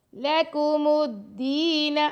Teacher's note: دال سے یا مدہ، دال کو 2 سیکنڈ تک لمبا کر رہیں گے۔ لَكُمُ الدِّينَ، نون کو لمبا نہیں کرنا۔ · لَكُمُ الدِّينَ، لام اور کاف کو لمبا نہیں کرنا، میم کو دال سے ملانا، یہ الف اور لام بالکل نہیں پڑھا جائے گا کیونکہ اس پر کوئی سائن نہیں ہے۔ لَكُمُ الدِّينَ، دال سے یا مدہ، دال کو 2 سیکنڈ تک لمبا کر رہیں گے۔